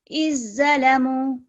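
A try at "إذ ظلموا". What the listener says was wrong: الظلموا، زوا بھی موٹا پڑا جاتا ہے. جی تھوڑا سا اس کو لمبا کر لیں. الظلموا 2 سیکنڈ کے لیے.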